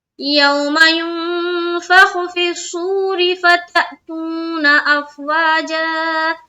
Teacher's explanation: افواج واو میں الف مدہ، جا میں بھی الف مدہ کرتے ہوئے رکیں گے